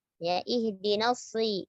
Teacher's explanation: Shad dibaca dengan tebal walaupun dalam keadaan kasroh.